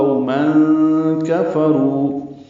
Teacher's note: تنوین کے بعد کاف آنے کی وجہ سے اخفا ہوگا